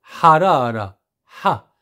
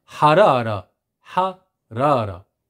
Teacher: C'est le deuxième H qu'on appelle le H. Guttural aussi, comme si on avalait quelque chose de brûlant